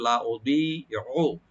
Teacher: লা উদিউ হামজাকে রাইট দিবেন, দটাকে রাইট দিয়ে একটা টানবেন দতে, লা উদিউ আইনটাকে অবশ্যই রাইট দিবেন যেন গলার মাঝখান থেকে আসে, হামজা যেন না হয়